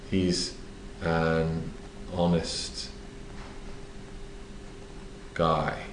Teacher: we should only use that with vowels well in this case the H in honest is silent it sounds like Hest not honest so the O is a